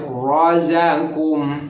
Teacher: Jadi kalau ada ro bentuknya patah, dibacanya tafhim tebal.